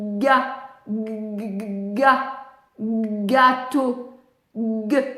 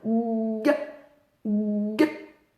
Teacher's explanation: ça chante dans la gorge avant d'éclater, c'est un son qui éclate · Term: vibration laryngée